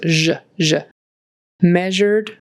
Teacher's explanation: That's one of the few words in English where there's a voiced zh kind of sound. So the sh is voiced, so it becomes zh. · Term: voiced sh